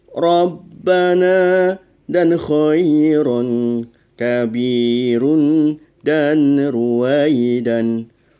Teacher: Ro tafkhim adalah ro yang dibaca dengan tebal, yaitu dengan cara saat mengucapkan ro menaikkan pangkal lidah sehingga dibaca dengan ro, tidak ra.